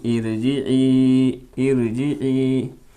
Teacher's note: را سے پہلے والے حرف کے نیچے زیر ہے تو یہاں را باریک ہوگی، پر نہیں ہوگی